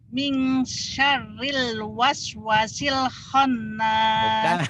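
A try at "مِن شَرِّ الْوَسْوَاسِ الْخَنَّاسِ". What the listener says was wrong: Panjang. Min syarril waswasil khannas. Wahnya panjang ya. Wah ini panjang nih. Nih, ini panjang nih. Di sini panjang. Min syarril wasil khannas.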